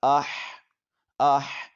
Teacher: حا کی آواز حلق کے درمیانی حصے سے نکالیں گے